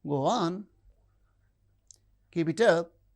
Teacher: The lower rise in statements is encouraging.